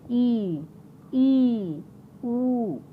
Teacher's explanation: वे स्वर जिनके उच्चारण में मुंह लगभग बंद रहता है